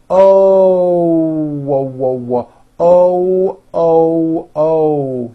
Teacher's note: to teach foreign speakers how to pronounce the o sound correctly when an American speaker makes an O we end the vowel with a small W sound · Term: little hidden w